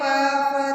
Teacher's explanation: देखो हम जब बोलते हैं प फ तो हमारे दोनों जो ओष्ठ है यानी होठ, होठ को ओष्ठ कहते हैं हम, और ये दोनों आपस में अड़ते हैं, छूते हैं एक दूसरे को, तब इनका उच्चारण हो पाता है।